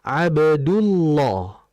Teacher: karena memiliki harakat dhammah atau fathah, huruf lam dalam kata Allah tetap tebal